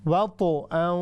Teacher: یہ ہے ہیوی قلقلہ چونکہ یہ طا ہے